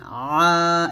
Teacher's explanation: আইনটা অবশ্যই হলকের মাঝখান থেকে চাপ দিয়ে বলবেন, বাংলাতে যেরকম আছে সেরকমই বলবেন, তো চাপ দিবেন, আ এরকম, শুধু আ বলবেন না, আ এরকম বলবেন।